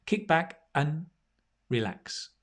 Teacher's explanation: The and becomes un.